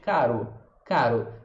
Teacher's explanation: É esse R aqui atrás do dente, só que a gente só estala ele uma vez.